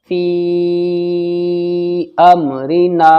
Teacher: یہ مد منفصل کی وجہ سے زیادہ کھینچا ہے، اور یہ الف مدہ ہے، الف مدہ 1 الف کے برابر کھینچتا ہے۔